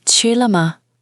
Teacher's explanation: Ch first tone, high and flat. L neutral tone, short and light.